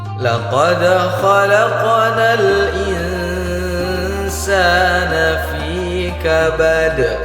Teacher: Ketika qalqalah berada di akhir kalimat, maka disebut qalqalah kubra. Harus kita besarkan pantulannya. · Perhatikan huruf dal, ketika dia diwaqafkan maka huruf dal berubah menjadi harokat sukun. Ketika dia harokat sukun, maka harus kita pantulkan, disebut dengan qalqalah. Ketika qalqalah berada di akhir kalimat, maka disebut qalqalah kubra.